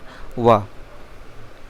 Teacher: व का उच्चारण स्थान है दंतोष्ठ्य व। दांतों के मिलने से और होंठों के उठने से ये उच्चारण होता है।